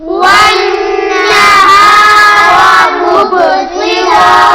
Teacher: با پر قلقلہ ہوگا کیونکہ یہ حروف قلقلہ میں سے ہیں